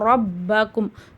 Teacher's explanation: ரா மேல ஜபர் இருக்கு ராவ நம்ம வல்லினமா ஊதணும்